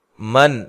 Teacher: نون ساکن کا اظہار ہے، غنہ نہیں کیا جائے گا